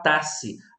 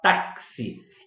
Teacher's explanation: o X ele não tem som de X apenas, ele tem um som de KS